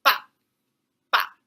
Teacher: A falling tone which starts out really strong and then it goes down. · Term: fourth tone